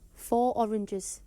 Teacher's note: a native Jordy speaker may drop the linking R sound which would normally sound when a word ends with the letter R and the new word starts with a vowel sound